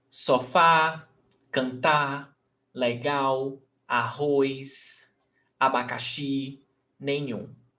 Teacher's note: All these words, the last syllable is the stressed syllable, is the strongest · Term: palavra oxítona